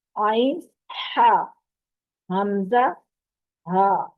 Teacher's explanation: ہا جب ہم ادا کرتے ہیں تو حلق میں سے ہوا نکلتی ہے